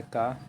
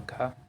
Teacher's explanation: अल्प प्राण है का, महाप्राण है खा